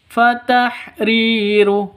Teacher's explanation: Ri panjang 2 ketukan karena ada ya mati diawali dengan kasroh.